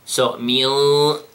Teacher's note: the gunna, when I gave it 2 seconds, the 2 seconds are heavy. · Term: ikhfa